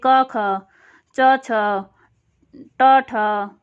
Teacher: अघोष में, यानी जिसमें गूंज शामिल नहीं होती, वो है पहला और दूसरा वर्ण।